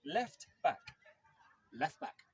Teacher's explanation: when these words are connected, the sound T on the end of left disappears.